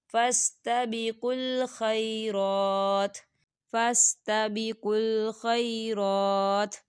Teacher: یہاں دیکھیے را کے پر کھڑی حرکات ہے تو ہم دو حرکت کے برابر کھینچیں گے